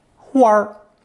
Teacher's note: a flower in Northern Mandarin is a combination of 花 plus unstressed 儿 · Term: 儿 transformation